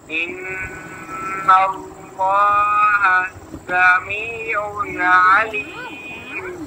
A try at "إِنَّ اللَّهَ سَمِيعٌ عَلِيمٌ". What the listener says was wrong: एक सांस में पढ़े ना إن الله سميع عليم आप ना समीउन कलकला कर देते हैं समीउन अलीम